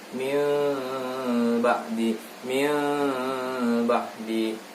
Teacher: bibir itu tidak dirapatkan sama sekali, tetapi agak dibuka sedikit, sekedar satu lembar kertas bisa masuk. Nah, dan itu berdengung di situ ya. Mim ba'di. Jadi tidak sempurna huruf ma. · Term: iqlab